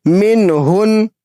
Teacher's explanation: نون ساکن کی آواز کو صاف ظاہر کر کے پڑھیں گے ناک میں چھپا کر نہیں پڑھیں گے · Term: اظہار